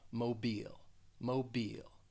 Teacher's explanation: that second syllable you're just going to say it with the long e sound